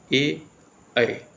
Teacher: ए और ऐ का जो उच्चारण होता है वो कंठ से भी होता है और तालव्य से भी होता है। उच्चारण करके देख सकते हैं आप, ए, ऐ, ठीक है। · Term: कंठ और तालव्य